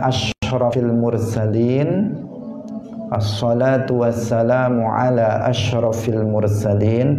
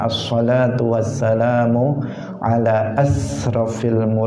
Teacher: pakai shin besar, tetapi dia membacanya dengan sin